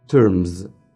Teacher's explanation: it ends with a voiced sound, ma sound, there is vibration, it's voiced, so the S that comes after that will be pronounced like terms, za sound, and not terms, of course.